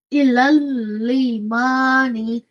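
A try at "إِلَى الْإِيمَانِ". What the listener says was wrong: So instead of saying limani, this zir is from here. So this is hamza. Imani.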